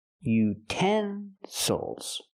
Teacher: now we have a word with three syllables we stress the second syllable · Not utensils, but utensils. Now we have a word with 3 syllables. We stress the second syllable. Utensils. Again, the third syllable is not stressed, so we cannot say ill.